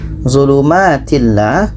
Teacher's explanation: tanwin bertemu la tidak dengung